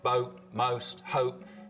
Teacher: the vowel sound in boat most hope starts with the tongue further forwards in the mouth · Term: goat fronting